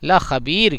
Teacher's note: اور یومئذ لخبیر اس را کو پر نہیں کرنا ہے، یہ را ایک دم باریک پڑھنا ہے